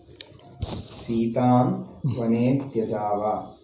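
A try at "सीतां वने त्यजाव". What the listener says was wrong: ವನೇ, ಅದು ಸಂಧಿಯಲ್ಲಿ, ಆ ಸಂಧಿಯಲ್ಲಿ ಹೊಂದುತ್ತದೆ. ಅದರಿಂದ ಗ್ಯಾಪ್ ಕೊಡಬಾರದು. ನೀವು ವನೇ ತ್ಯಜಾವ ಅಂದ್ರೆ ಆ ಗ್ಯಾಪ್ ಏಕೆ ಕೊಡೋದು? ಅವಗ್ರಹ ಅಂದರೆ ಗ್ಯಾಪ್ ಕೊಡಬೇಕೆಂದು ಅರ್ಥ. ದೆನ್ ಅದು ಅಕ್ಷರ ಸೇರಿಕೊಂಡಿದೆ.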